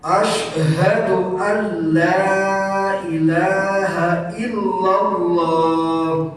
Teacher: Karena idgham bila guna, maka harus nunnya dihilangkan jadi Allah.